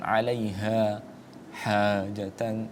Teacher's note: Huruf ha itu wasatol halqi di tengah tenggorokan ya. Jangan kemudian disamakan alaiha ha jatan.